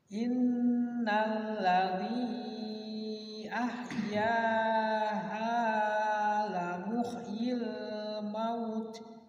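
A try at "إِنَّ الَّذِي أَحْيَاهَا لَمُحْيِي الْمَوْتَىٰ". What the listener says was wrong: Mauta panjang. Mauta kalau nggak panjang berarti maut, kalau dipanjang. Hanya panjang.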